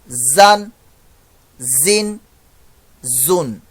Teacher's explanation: زا سفیریہ لیٹر ہے، سی ٹی کی آواز آئے گی